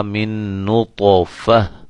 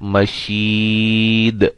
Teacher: وقف کی حالت میں اس گولتا کو ختم کر کے ہا میں چینج کر دیں گے